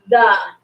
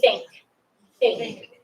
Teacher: if you put your hand on your throat, say the. You should feel your throat vibrate. Now say think. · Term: voiced